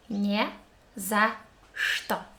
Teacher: Always in this word, we consist of 3 letters. We read ch as sh, что. And the whole expression we pronounce very briefly.